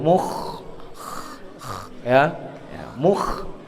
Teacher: kha itu ketika baca kasar, ngorok koyo ane wong turu